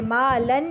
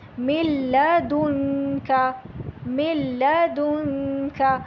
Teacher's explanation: میم کو لام سے ڈائریکٹ ملائیں گے، نون سے نہیں پڑھیں گے